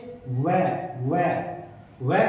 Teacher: व की साउंड निकालते हैं तो दांत और ओष्ठ दोनों ही इससे स्पर्श करते हैं। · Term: दंतोष्ठ्य